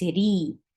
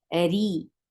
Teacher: Ra is light here because if ra is with kasra, it is always light.